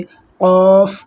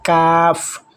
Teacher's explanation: क़ाफ में ज़बान की जो जड़ है वो तालू के नरम हिस्से से, जबकि काफ में जो ज़बान की जड़ है वो तालू के सख्त हिस्से से लगेगी तब ये वर्ड अदा होंगे।